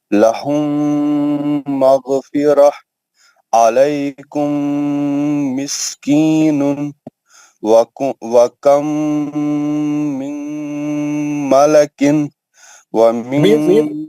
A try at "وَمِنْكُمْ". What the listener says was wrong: دوسرا غنہ بھی میم کا ہی ہے، نون کا آواز نہیں آنا. نون ساکن کے بعد ادغام ہے نا، نون کا آواز کئی کو آیا آپ کو؟